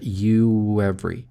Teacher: Заканчивается у нас на у, звук U, добавляем небольшой W перед every. Получается you every.